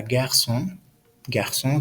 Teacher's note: La cedilla es este signo diacrítico que se encuentra debajo de la C y tiene un valor de una S sorda, es decir, sin vibración en la garganta